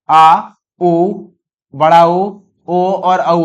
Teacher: जिन स्वरों के उच्चारण में जीभ का पिछला भाग काम करता है उसे पश्च स्वर कहते हैं